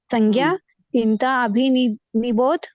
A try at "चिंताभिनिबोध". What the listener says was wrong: अभी नहीं होता है वो सिर्फ चिंता भी निबोध होता है विनिबोध चिंता विनिबोध